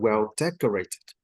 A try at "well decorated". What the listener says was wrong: You did not enunciate the fourth sound, the fourth syllable. Well decorated. Rated.